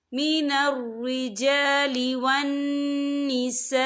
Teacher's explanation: فِي سَبِيلِ اللَّهِ والمستضعفین من الرجال والنساء، یہ دیکھیں والنساء، یہاں خالف سے پہلے زبر ہے اور اس پر مد بھی ہے، یہ مد جو ہے مد متصل ہے، اس کی مقدار 4 حرکت کے برابر ہے، تو ہم اسے 4 حرکت کے برابر کھینچ کے پڑھیں گے۔